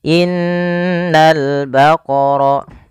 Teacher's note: Yaitu pada lafal ini suara nunnya ditahan, dan nun ketika dia berharokat tasydid kita hukumi dengan bacaan namanya gunnah. Cara membacanya, menahan dulu suara n-nya sepanjang 2 harokat baru dilepas.